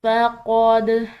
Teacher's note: آگے دیکھیں، فَقَدْ، دال حروف قلقلہ میں سے، تو اس پر ہم قلقلہ کریں گے، آواز کو ہلائیں گے